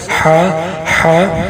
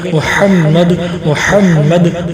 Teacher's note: ہا کو جو ہے حلق سے نکالنا ہے، حلق سے ہا ہا.